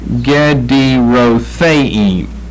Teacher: The theim is where you lift up your voice.